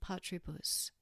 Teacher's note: the emphasis when when pronouncing a three- syllable word changes so patribus needs to have the first syllable emphasized